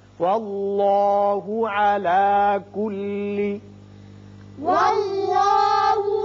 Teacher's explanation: اس میں اللہ کا لام پر ہوگا، اس لیے کہ پہلے حرف پر زبر ہے